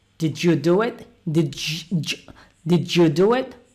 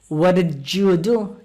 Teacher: d and you when they become together they are pronounced j